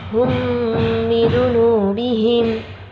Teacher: Selanjutnya fa'ahlaknahum bidunubihim, ada mim sukun bertemu ba. Nah, mim sukun bertemu ba adalah ikhfa syafawi, dibacanya baca dengung